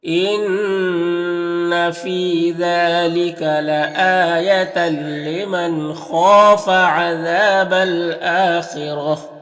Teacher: نون ساکن کے بعد خا حروف حلقی میں سے تو نون میں اظہار حقیقی ہوگا۔ خا حروف مستعلیہ میں سے پر پڑھیں گے، الف مدہ ایک الف کے برابر کھینچیں گے، یہاں پر بھی الف مدہ ایک الف کے برابر کھینچیں گے۔ · تنوین کے بعد لام حروف یرملون میں سے تو ادغام تام ہوگا